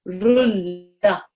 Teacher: you don't make any of the noon sound at all. No nasalization